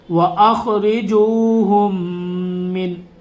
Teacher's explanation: میم ساکن کے بعد جب میم آتا ہے تو ادغام شفی ہوتا ہے، غنہ کریں گے۔